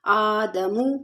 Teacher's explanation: لام قاف زبر لق، قاف مد کھڑا زبر قا، فتلقى آدم، آدم میں حمزہ پہ کھڑا زبر ہے، تھوڑا سا کھینچ کے پڑھیں گے